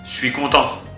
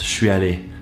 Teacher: So je suis, which I hope you're all familiar with by now, has become shwee.